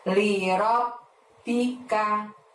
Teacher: robnya di situ juga menghadap ba tasydid, maka robnya tahan tekan selama 2 harokat